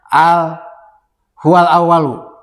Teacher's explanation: Lamnya dibaca idhar. Jelas lamnya. Sebab hamzah termasuk kepada huruf idhar qamariyah.